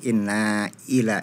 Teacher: di situ ada Mad Jaiz munfasil tadi dibaca cuma tiga harakat saja harusnya dibaca lima harakat